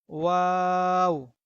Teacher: দুই ঠোঁটকে গোল করে আমরা ওয়া এর উচ্চারণ করব।